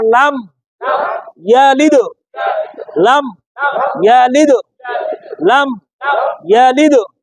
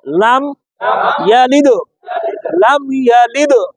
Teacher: দালের উপর সাকিন থাকলে কলকলা করে লাম ইয়ালিদ